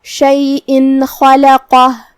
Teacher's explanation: قاف بھی حروف التفخیم میں سے ہے تو ہم حرف القاف کو بھاری آواز میں پڑھیں گے، مطلب خا کو بھاری آواز میں، لام کو ہلکی آواز میں، پھر حرف القاف کو پھر سے بھاری آواز میں · خا کی ادائیگی حلق کے اوپر والے حصے سے ہے. خا حروف التفخیم میں سے بھی ہے تو ہمیں اسے بھاری آواز میں پڑھنا ہے.